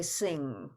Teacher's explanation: so NG we're gonna put back of the throat nasal